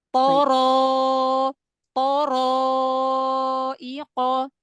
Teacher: Ya, dijaga ketebalannya karena alif mengikuti huruf sebelumnya. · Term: tafkhim